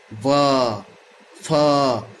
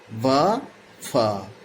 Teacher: देखिए ऊपर के दांत निचले होठ में जाके अपने आप गड़ जा रहे हैं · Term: दंतोष्ठ व्यंजन ध्वनि